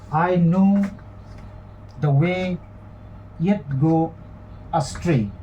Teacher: Now in astray, astray contains the diphthong, so it's a long syllable that will be stressed and not the short syllable up. So this is the accentual pattern: unstressed, stress, unstressed, stress, unstressed, stress, unstressed, stress. So that pattern we know is iambic, and number of foot in each of the lines is 1. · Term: iambic monometer